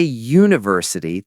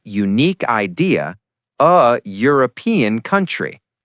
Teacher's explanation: when you say university, the sound at the beginning is you, like the letter y. That's a consonant sound. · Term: y sound